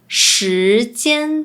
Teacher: Sometimes, they also pronounce “j” similar to the “z” sound.